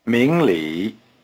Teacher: Notice that the tones are rising low.